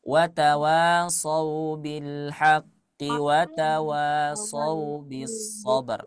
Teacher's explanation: kalau kita ingin baca wasol maka ki-nya cukup satu harakat.